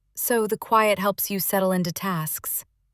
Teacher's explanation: That falling tone at the end showed I understood, not that I was questioning.